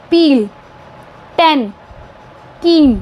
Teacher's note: the first sound of these words are voiceless peel 10 ke in another way during the pro uh production